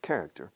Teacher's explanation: we stress the first syllable, character